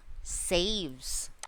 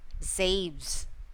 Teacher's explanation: the S sounds here could be heard as Z.